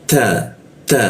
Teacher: ujung lidah bertemu gigi ya, ta seperti itu. Ada hembusan dikit, bocor halus dia.